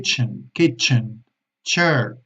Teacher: empieza con una explosión y termina con una emisión de aire